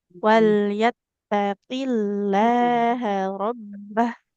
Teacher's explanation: Untuk lafadz Allah ya, kalau yang didahului huruf berharokat kasroh nggak boleh tebal ya.